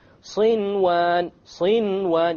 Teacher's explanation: Without any ghunna, you make the noon clear and you move on. Why? Because it's in one word. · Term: idhar